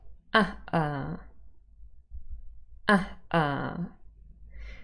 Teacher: the glottal stop here comes before the initial vowel and it does make it quite sharp